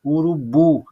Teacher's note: uma dessas sílabas eu falo com mais intensidade, mais alto. Ó. Urubu, a sílaba tônica é o bu